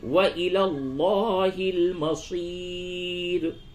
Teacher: لام کو پر کیجئے · را موقوفہ سے قبل یا ساکن ہے، اس را کو باریک کر کے پڑھیں گے